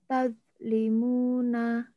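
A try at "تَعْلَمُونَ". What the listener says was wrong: nanti dilatih lagi ya huruf wa ini ya. Nah, sebenarnya secara makhraj sudah tahu. Jadi dalam hal ini huruf-huruf yang sedang kita bahas ini yang perlu kita latih ini nih. Ini ujung lidah, ini pangkal lidah, ini tengah.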